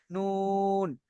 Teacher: জীবের আগাটা কিন্তু উপরে তালুর সাথে লাগছে নুন জীবের আগা উপরে তালুর সাথে লাগিয়ে নুন শুধু প্লেন একদম